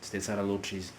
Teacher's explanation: We kind of merge the lot and the is to come up with lochis